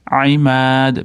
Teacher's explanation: Imad mimdan keyin mat d qalqala. Allati ya'ni matga a bilan boshlanadi.